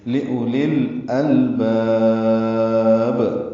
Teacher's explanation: لأولی حمزہ کو جلدی سے پڑھیں گے، لام کو لام سے ملا دیں گے، اظہار قمری ہوگا. · یہ وقفاً مد عارض السکون ہے اور با ساکن پہ قلقلہ